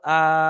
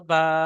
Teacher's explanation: প্রত্যেকটা অক্ষরকে এক আলিফ পরিমাণ টান দিয়ে পড়তে হবে, আলিফ মাদ্দার সমান হওয়ার কারণে। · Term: খাড়া জাবর